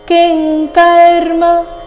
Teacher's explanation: ಅನುಸ್ವಾರದ ಉಚ್ಚಾರಣೆ ಇಲ್ಲಿ ಕ ವರ್ಗದ ಅನುನಾಸಿಕ